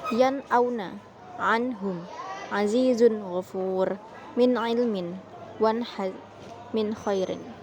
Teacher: Semuanya ini dibaca jelas tanpa mendengung, jadi langsung masuk ke huruf berikutnya. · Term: idhar halki